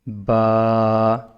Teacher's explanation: दोनों होंठों को मिला के जब हम इसको छोड़ेंगे तो ये बा जो साउंड निकलेगा वो बा का निकलेगा।